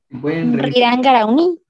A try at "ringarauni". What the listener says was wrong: Sí está bien, pero le aumentaste ra. Ringarauni, eso. Sí, porque el ring le aumentaste la R además, pero ahí estuvo bien.